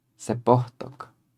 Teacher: So technically it's sepotok. But Huasteca doesn't like a W at the end of a syllable, so instead of saying sepotok, you'd say sepohtok. It's easier to pronounce.